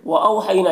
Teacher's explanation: वअौहैना, यहाँ पर वाउलीन से नर्म आवाज़ के साथ जल्द पढ़ेंगे।